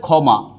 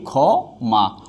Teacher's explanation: কিন্তু ক্ষীয় যদি শব্দের আদিতে থাকে, যেমন এই হচ্ছে যে ক্ষমা, তখন এই ক্ষীয়র উচ্চারণ হবে কি এই খ মা। অর্থাৎ ক্ষীয় যদি শব্দের আদিতে থাকে তখন ক্ষীয়র উচ্চারণ হবে কি খ।